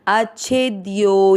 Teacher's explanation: यो के बाद में अवग्रह आपको लंबा खींचते हुए यह पूरा बोलना है।